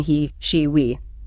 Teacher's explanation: your tongue is very high and your mouth spreads wide like you're smiling. It's a tense sound. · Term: long e, long E